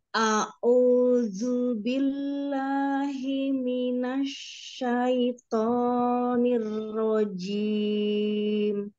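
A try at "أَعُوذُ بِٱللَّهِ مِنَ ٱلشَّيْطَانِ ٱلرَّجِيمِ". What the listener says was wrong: Tobi'inya tadi yang awal sudah bagus, jangan kebanyakan. Kata jangan kepanjangan yang to ya. A'udzu billahi minasy syaithanir rajim.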